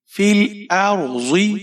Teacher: حمزہ کے اوپر زبر ہے، آگے را ساکن ہے، را کو موٹا پڑھیں گے۔ · ضاد کے نیچے زیر ہے، موٹا پڑھیں گے اور بغیر کھینچے پڑھیں گے۔